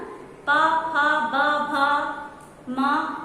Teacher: आपकी दोनों ओठ जो है आपस में एक दूसरे का स्पर्श करेगी। एक दूसरे से जब तक वो टच नहीं करेंगी तब तक आप आवाज नहीं निकाल सकते हो।